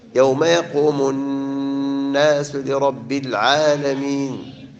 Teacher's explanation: يوم يقوم الناس نون مشددة. لرب الراء لا ترقق. لا ترقق مفخمة